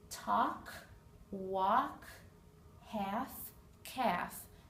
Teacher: these four words have a silent L talk walk half calf the L is not pronounced in any of those words